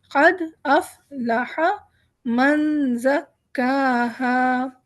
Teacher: دال وہ ہے جس پہ ہم قلقلہ کرتے ہیں کیونکہ ایک اسٹرانگ ورڈ ہے اور اس کے فوراً بعد حمزہ آ گیا ہے اور دال پہ جزم بھی ہے